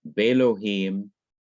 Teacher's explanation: This short E, segol, has to be lengthened to long E, which is sire, which is an A sound, like the E in 8 or the E in wait.